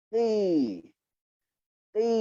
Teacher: Untuk bagi dia berbaris bawah sambil ketebalannya dikekalkan, kita rendahkan rahang bawah kita. Ni rahang bawah ni rendahkan dia. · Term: huruf tebal